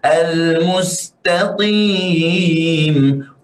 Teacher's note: Qaf ini tidak memiliki sifatul itbaq, sebab itu kita baca dengan cara yang kurang tebal.